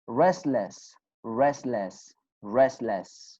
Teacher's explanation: we do not pronounce te sound why because it is between two consonant sounders very good i